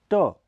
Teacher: यह अल्पप्राण अघोष ध्वनि है इसका उच्चारण स्थान मूर्धा माना जाता है ठ यह महाप्राण अघोष ध्वनि है इसका उच्चारण भी ट की